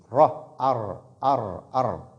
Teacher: La lettre Ra ici sort de l'extrémité de la langue, s'appuyant sur le palais. S'appuyant sur le palais vers la devanture, donc pas au milieu du palais, mais plutôt de l'avant.